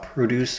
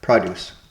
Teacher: Emphasis on first syllable equals fresh fruits and vegetables. Emphasis on second syllable, make or create.